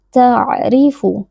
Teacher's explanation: huruf ain sukun memiliki sifat bainiyah, maka kita beri sedikit aliran suara, tidak boleh langsung kita putuskan ta, tapi kita alirkan sedikit. · Huruf ra kasrah dibaca dengan tarqiq atau tipis.